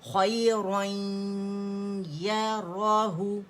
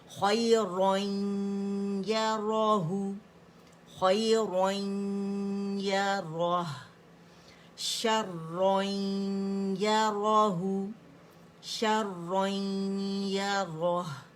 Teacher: دیکھیں، خیرن، یہ کیا ہوا ہمارے پاس، ادغام ناقص ہو رہا ہے، غنہ کریں. 50% منہ سے آواز آئے گی، 50% ناک سے آئے گی